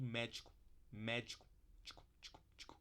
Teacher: Olha essa palavra pro paroxítono aqui, que a gente tende a desvozear tudo que vem depois da tônica · Médico, numa fala encadeada, natural mesmo, a gente acaba falando médico, médico, tico, tico, tico. O final fica todo desvozeado